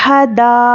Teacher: हुर्फ़े मद्दा के बाद हमज़ा उसी कलिमे में हो तो मद्दे मुत्तसिल होगा, और ऊपर मद भी है तो इसको हम 5 से 6 अलिफ के बराबर खींचकर पढ़ेंगे।